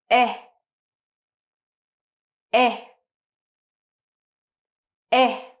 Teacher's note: So your tongue is in the middle part of your mouth, okay? And your mouth doesn't move. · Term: the sound eh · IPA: /e/